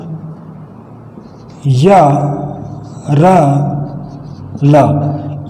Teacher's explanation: यह है जो तालव्य है, रा है मूर्धन्य है और ला है जो दंत्य है।